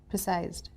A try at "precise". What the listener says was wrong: Precise, sir, last sound. Precise. There are some words which are again mispronounced, like precise should be precise, increase should be